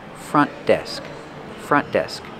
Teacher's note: Use a stop T for front. Do not release the sound. Don't say front desk, but front desk.